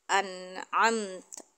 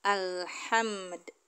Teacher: ketika idhar itu cuma satu harokat, disamakan dengan harokat sukun yang lainnya